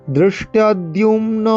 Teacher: দৃষ্টদ্যুম্ন দৃষ্টদ্যুম্ন, দৃষ্ট দয়েরই মধ্যনাংশটা হয় মূর্ধা উচ্চারণ করতে হবে, জিভকে উল্টো করে বেঁকিয়ে একদম উপরের অংশে ঠেকিয়ে।